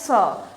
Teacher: स का उच्चारण करते इसमें हवा फेफड़ों से निकलकर दंत मूल के पास जाके टकरा रही है तो इसका मतलब इसका जो उच्चारण हुआ वो भी हुआ हमारा वत्सरिया या इसको दंत मूल भी बोलते हैं। · हम मुर्धा नेक्स्ट आता है स स का उच्चारण करते समय हवा फेफड़ों से निकलकर दंत मूल के पास जाकर टकरा रही है